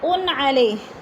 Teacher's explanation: دو پیش تنوین، حروف حلقی میں سے حمزہ آ گیا تو ادھر اظہار ہو رہا ہے، اکفا نہیں کریں گے۔